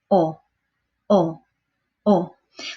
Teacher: the letter O in Spanish is like a very round Oh like the O in bowls